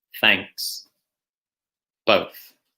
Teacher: It's a voiceless sound, meaning it's just air coming out. There's no vibration in your vocal cords.